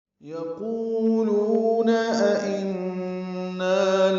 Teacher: یقولون قاف پر ہے، قو و مدہ لو و مدہ ہے، أئنا دو حمزہ ہیں، دوسرے حمزہ کو بھی تسہیل پڑھنا ہے